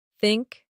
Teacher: Many learners struggle with the sound in words like think or this, the tongue comes gently between the teeth